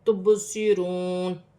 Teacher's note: تبصرون، واو ساکن سے پہلے پیش ہے تو واو مدہ بن رہی ہے، ایک الف کی مقدار کھینچ کر پڑھا جائے گا. با ساکن ہے، با حرف قلقلہ میں سے قلقلہ کے ساتھ ادا کیا جائے گا